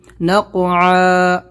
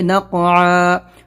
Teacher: نق قلقلہ کرنا ہے اور عین نکالنا ہے،